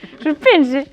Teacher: Pois suspense, que é con e pechado. Digo casi un i.